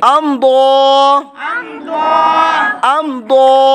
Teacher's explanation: میم ساکن کے بعد حرف با اور میم کے علاوہ ضاد آنے کی وجہ سے اظہار شفوی بغیر گننے کے